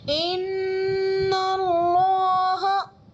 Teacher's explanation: اللہ کے لام سے پہلے نون پر زبر ہے تو اللہ کے لام کو پر پڑھیں گے